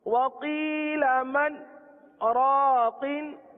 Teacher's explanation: मन के बाद आवाज रुक गई, हमने सांस ना लिया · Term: सत्ता